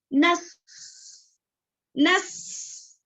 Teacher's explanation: सीन की आवाज अच्छे से करना है, जैसे कि नस, नस। क्यों? क्योंकि ये सीटी वाला हुर्फ है।